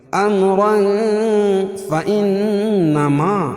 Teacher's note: امرا فإنما اخفا حقیقی, کیونکہ تنوین کے بعد حروف اخفا کے 15 حرفوں میں سے فا ہے تو یہاں ناک میں آواز کو چھپا کر پڑھیں گے. امرا فإنما نون مشدد غنہ ہوگا,